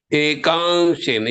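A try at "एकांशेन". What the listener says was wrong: I did not hear the ka sound.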